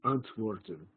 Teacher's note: a moment of silence between the first and second syllable the antworten bit uncertain the silence is produced with the glottis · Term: glottal stop